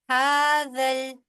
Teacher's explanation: متا ہاذل ہاذل ہا کے اوپر بھی کھڑی زبر ہے، اور زال جو ہے وہ جا کے لام کے ساتھ ملے گی